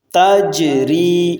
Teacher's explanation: جیم پر قلقلہ اور را کو آگے باریک پڑھنا ہے